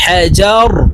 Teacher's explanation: হাজার র কে ওয়াকফুর ক্ষেত্রে সাকিন করে ফেলবো